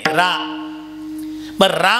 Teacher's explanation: राम म्हणताना आपल्या तोंडाचा आकार कसा होतो रा उघडत आणि म बंद होत